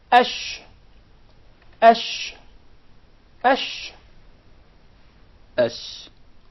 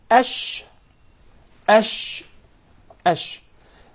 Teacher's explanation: So the sheen is articulated from the middle of the tongue, and what lies opposite to it from the upper palate, or the roof of the mouth.